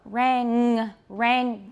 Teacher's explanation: make sure that it's that it's velar and that you're not saying rand